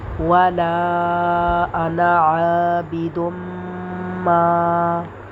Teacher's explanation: میم مشدد کے اوپر غنہ بھی کریں گے اور ایک الف کے برابر الف کو کھینچیں گے بھی